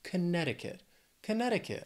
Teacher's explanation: Connecticut has four syllables the stress is on that second syllable